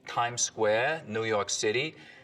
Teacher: The tongue tip hits the teeth or close to them on TDN sounds instead of, you know, a little further back. So, you can hear that in like this kind of New York City accent, tongue tip on the teeth.